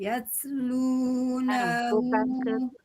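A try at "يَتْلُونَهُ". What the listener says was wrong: bukan yats, bukan kayak ada yats. Nah, tapi yat nafas saja. Yat, yat, yat.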